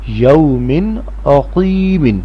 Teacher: تنوین یعنی دو زیر کے بعد عین ہے اور عین حروف حلقی ہے، اس لیے تنوین کی آواز ناک میں سے نہیں آئے گی